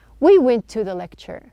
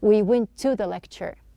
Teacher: we are not pronouncing two T's